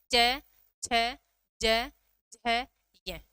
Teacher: तालु की बात करें या तालव्य व्यंजन की हम बात करें तो तालव्य व्यंजन में कौन सा वर्ग आएगा? च वर्ग।